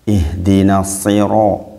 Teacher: karena ro berharokat fathah maka dibaca tafkhim atau tebal.